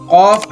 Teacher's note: قاف حلق کے اوپر والے حصے سے نکلتا ہے